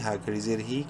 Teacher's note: کھڑی زیر کی وجہ سے ہا کو ایک الف کے برابر لمبا کریں گے